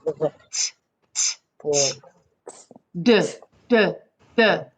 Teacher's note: So this sound is by pressing the tip of the tongue up against the back of the front teeth. Or it's actually kind of behind both front teeth, both top and bottom teeth.